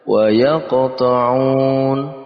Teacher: Di situ ada qaf yang berharokat sukun, maka harus kita pantulkan karena masuk dalam pembahasan qalqalah.